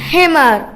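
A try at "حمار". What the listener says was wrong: ഹിമാർ. കണ്ടോ, ഹ എന്നാണ്, ഹിമാർ അല്ല.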